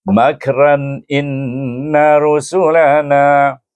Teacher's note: jadi makna makran jangan dipanjangkan, jangan didengungkan.